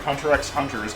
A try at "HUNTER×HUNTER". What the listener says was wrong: Yes, it's called Hunter Hunter. It's not Hunter x Hunter. Hunter Hunter. That X is symbological nonsense. It has no sound.